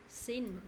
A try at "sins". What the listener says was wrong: Từ nay mình cũng có nhắc một vài lần nhớ có s âm cuối nhé.